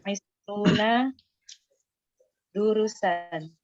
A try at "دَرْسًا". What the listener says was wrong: Masa durusan? Kalau durus itu biasanya setelah ro ada waw. Kalau seperti ini dibacanya apa? Darsan.